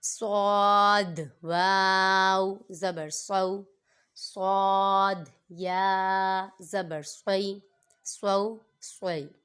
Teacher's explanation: حرف مستعلیہ میں سے آتا ہے صاد، اس لیے اس کو پر پڑھیں گے